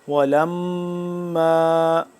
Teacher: ولما، ولما لام میم زبر لم، میم تشدید ہے، ولما میم کے اوپر تشدید ہے، میم یعنی کہ میم مشدد ہے تو اس کو ہم یہاں پہ گنہ کریں گے